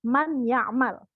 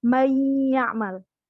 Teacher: Beda dengan izhar. Tidak dibaca jelas, tapi didengungkan. Suara nun sukun masuk ke ya. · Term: idgham bi gunnah